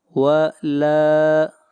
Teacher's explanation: لام کو کھینچ کر پڑھیں گے، ایک الف کے برابر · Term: الف مدہ